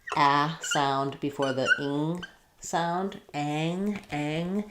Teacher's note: when we have the a sound before the ing sound, ang, it tends to get raised a little bit